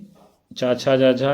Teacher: च छ ये तालव्य ध्वनियां हैं